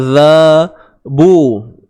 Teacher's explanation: Huruf zal keluar ke hujung lidah